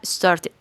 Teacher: el final se va a pronunciar como una sílaba más es decir esta e y esta d la vamos a pronunciar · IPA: /id/